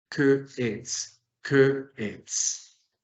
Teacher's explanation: Hay que separar las dos E para que no nos suene como asimilada, como con la liaison francesa.